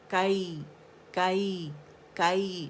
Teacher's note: لین بند ہے، کائی، اس میں بھی اصول وہی ہے کہ فتح کے لیے آواز ایک کاؤنٹ کے لیے اوپر جائے گی، اینڈ نرمی سے پھر یا کے ساتھ ملائیں گے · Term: یائے لین